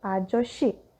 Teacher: if shiot and sang-shiot are followed by the vowel e, they become sh in pronunciation